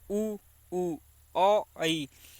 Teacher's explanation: वृत्तमुखी वे होते हैं जिन वर्णों को बोलने से मुख वृत्त के समान हो जाए।